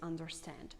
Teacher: the sound r is pronounced in american accent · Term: r sound